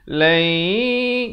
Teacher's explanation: Jadi hukum idgham bi gunnah, masuk beserta dengung 2 harakat